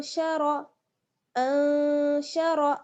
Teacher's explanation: रॉ को पुर पढ़ना है क्योंकि रॉ पर ज़बर है